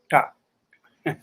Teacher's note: the tongue curls back and touches the roof of the mouth